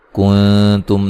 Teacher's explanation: نون ساکن کا باریک اخفا ہے، میم ساکن کا اظہار ہے